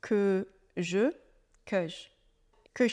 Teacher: dans notre contraction on ne prononce pas le E de je et que et je deviennent presque un seul son